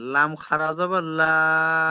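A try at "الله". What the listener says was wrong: লা হবে না, এটা লা কেন? আল্লাহ কেন হলো? আগে তো জাবার এসছে। আল্লাহ। আবার লা বলছেন, এখানে আগে জাবার এসে।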